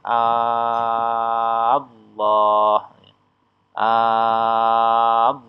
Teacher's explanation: Maka cara bacanya a ini dibaca panjangnya 6 harokat. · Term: mat farqi